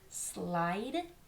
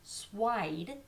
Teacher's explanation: the word slide most often times becomes swide